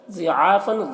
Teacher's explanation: ضاد کو پر پڑھنا ہے، عین میں کھڑا زبر ہے، ایک الف کے برابر کھینچ کر پڑھیں گے۔ فن میں جو تنوین ہے، اس تنوین کو جلد پڑھنا ہے، یہاں پر اظہار حقیقی ہو رہا ہے۔